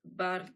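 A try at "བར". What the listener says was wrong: Par. Par, absolument. Et par. Attention, c'est pas bartou, c'est partout. Hein, on dit les bardos, mais en fait, c'est les pardos.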